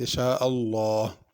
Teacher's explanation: لفظ اللہ کے لام کو پر پڑھنا ہے